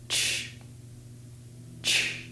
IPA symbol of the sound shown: tʃ